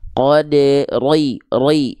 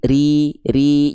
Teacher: Kalau huruf ro berharokat baris bawah, vokalnya I, tandanya dia dibaca dengan keadaan yang tipis. Jadi jangan sampai dibaca tebal.